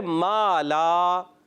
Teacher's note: दोनों में मा और ला, ये दोनों हर्फ बारीक हैं, तो इसके बाद वाला अलिफ भी हमने बारीक पढ़ा